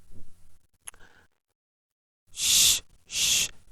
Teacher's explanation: the narrowing of the vocal tract between the blade of the tongue and back part of the alveolar Ridge · So actually shy is a in shy, sh sound is a palato alveolar fricative